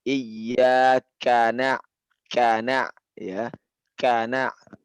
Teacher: Lihat penyebutan kaf di sini ada hamesnya ya. Ada keluar anginnya. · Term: hamas